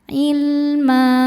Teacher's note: Nah, saat berhenti di ma hukumnya mad iwad karena ada baris tanwin fathah yang diberhentikan. Cara bacanya panjang dua harakat.